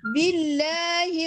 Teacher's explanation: Baca jalalah. Sebelumnya berbaris di bawah, dia tidak baca tebal, dia baca nipis. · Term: tarqiq